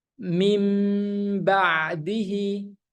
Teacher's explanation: apabila nun sukun bertemu dengan huruf ba maka bunyinya itu menjadi mim bukan ba lagi Makanya bibirnya akan tertutup rapat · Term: ikqlab